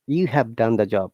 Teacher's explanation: you is a strong, have is a weak word.